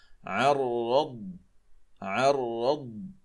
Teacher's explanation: والضاد ساكنة طبعا وليست مقلقلة. الضاد ليست من حروف القلقلة، إنما يجب أن تأخذ حقها من الاستطالة